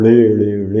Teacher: یہ ہے، یعنی پوری زبان کو ایک کلا بازی کھانی پڑتی ہے، اوپر تالو کے قریب جا کے نا یہ ٹکر کھاتی ہے، الٹی ٹکر، جس کی نیچے والی سائڈ جا کے اوپر لگتی ہے تو ڑے نکلتی ہے